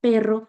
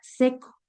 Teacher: en la palabra perro, la e suena más abierta que en la en la e en la palabra seco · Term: vocales de apertura